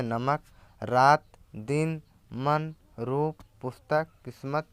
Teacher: हिंदी के प्रत्येक शब्द के अंतिम अ लगे वर्ण का उच्चारण हलंत सा होता है।